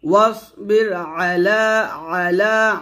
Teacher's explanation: তারপর ওয়াসবির আলা ওয়াও সাদ জবর ওয়াস মোটা হবে, ওয়াসবির আলা আইন চাপ দি আলা লাতে এক লিপ টান হবে।